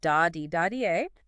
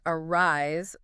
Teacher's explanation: the iamb, which is an unstressed syllable followed by a stressed syllable